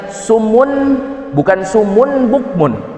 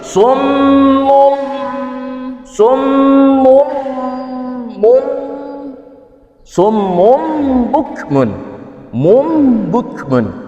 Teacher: Menukarkan nun mati atau tanwin kepada huruf mim, kepada huruf mim. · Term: Iklab